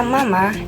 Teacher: bunyi m dalam kata Mama dihasilkan dengan menutup bibir dan melepaskan udara dari hidung